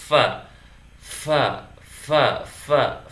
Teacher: Ada nafas yang mengalir. Maka fa bersifat hamas dan mustahil dia bersifat jahar.